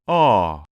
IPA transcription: ɔ